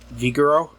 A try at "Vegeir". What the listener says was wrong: There's no O in there. Where'd you get an O from? Vegeir.